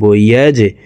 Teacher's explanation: জিম কলকলার হরফ নিচের দিকে ধাবিত করে ধাক্কা দিয়ে উচ্চারণ করব